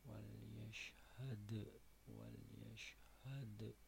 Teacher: yashad ini kolkola kubro sebab berada di akhir kalimat